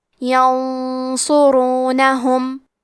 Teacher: صاد حروف الاخفاء میں سے ہے تو ہم یہ حکم کو غنہ کے ساتھ ادا کریں گے. کیونکہ صاد حروف التفخیم میں سے ہے تو ہمیں یہ غنہ کو بھی تفخیم سے ادا کرنا ہے · حرف الصاد کو موٹی آواز میں پڑھیں گے اور را پہ پیش ہے تو یہاں را کا حکم ہے تفخیم تو ہمیں حرف را کو موٹی آواز میں پڑھنا ہے